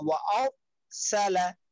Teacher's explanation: ওয়ারসালা বললে রটা মোটা হলো না